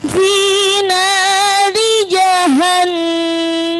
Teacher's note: di situ ada nun nih di tasydid, maka bunyinya hunnah.